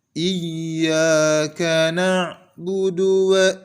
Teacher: Selanjutnya, pada ayat yang kelima, kesalahan yang sering terjadi pada kaum muslimin adalah tidak menekan huruf ya yang bertasdid. Contohnya yang keliru adalah Iyyaka na'budu wa seolah-olah huruf alif atau huruf hamzah terpanjangkan. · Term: huruf ya yang bertasydid